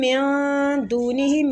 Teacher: میم مشدد ہے، غنہ کریں گے۔